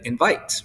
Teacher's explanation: or iambic and so the example be like invites right so the in is kind of less stressed and then the vite is more stressed